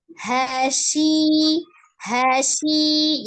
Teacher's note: Ya, tengah lidah yang bertemu dengan langit-langit di atasnya, di tengah juga. Jadi dia tidak ada melibatkan safatain.